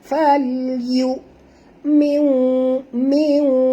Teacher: Cuma nama mad tu nak kena tahu faman syaa falyu. Bukan yu, jangan baca ain, ini baca hamzah